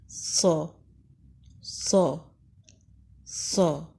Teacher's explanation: منہ کی شیپ اس طرح سے ہے جیسے ہم برش کرتے ہیں، زبان اندر ہے، زبان اور دانت کے درمیان فاصلہ ہے تاکہ سیٹی کی آواز آ سکے۔ صاد میں موٹی سیٹی کی آواز ہوتی ہے اور بلند اور موٹا پڑھتے ہیں